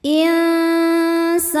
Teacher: Ada hukum ikhfa hakiki awsat karena nun sukun bertemu sin. Cara bacanya nun disamarkan ke sin disertai dengungan. insana. Sa hukumnya mad tabi'i dhahiri karena ada alif didahului fathah, maka sinnya panjang 2 harokat.